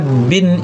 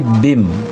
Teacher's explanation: digabung bin ini dengan mim bacanya bim maal guna disertai dengan dengung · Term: idigham maal gunna